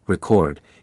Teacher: When stressed on the first syllable, record, it is a noun meaning documentation or accomplishment. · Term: syllable stress